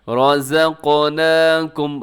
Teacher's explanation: اس میں قاف کو کلکلا بھی کرنا ہے اور موٹا بھی کرنا ہے۔ رزقناکم، را کی اوپر زبر ہے تو را موٹی پڑی جائے گی، اور اس میں رموز اوقاف کا آپ کو پھر طا نظر آ رہا ہے تو آپ یہاں پر وقف کر سکتے ہیں۔